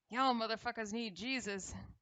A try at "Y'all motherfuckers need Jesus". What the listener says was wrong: You gotta emphasize the Jesus part specifically.